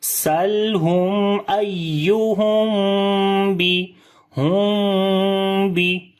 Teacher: We make ikhfai shafawi here, like the we make gunna sound. And we hide the sound of meme into our nose, like we close our lips together, but we do not join it hardly. We join our lips softly, right? And the sound goes into our nose. · On the ya we make nabr quality. We raise the voice of ya. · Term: ikhfa shafawi